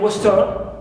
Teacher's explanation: Like in western, we stress west, right, west and not turn. Turn is here neutral.